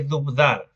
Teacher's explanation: hay una consonante epentética, una epéntesis del oclusivo bilabial sonoro. Dubdar, oclusivo bilabial sonoro, epéntesis, es decir, se agregó una consonante en medio de la palabra.